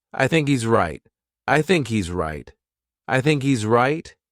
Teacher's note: there's no h Happening Here